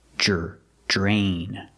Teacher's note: we see DR together, it makes the j sound, like jump and juice. J plus the R